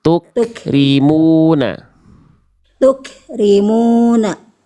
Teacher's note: Jangan ada mantul tuk, ada e-nya sedikit tadi. Cukup percikan aja. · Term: Kaf sukun